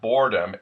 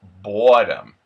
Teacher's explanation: We have the O-R-A-R turning into aw. So instead of boredom, it becomes boredom.